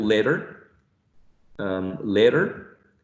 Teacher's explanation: a flick, very rapid vibration of the tongue against the alveolar ridge. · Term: flap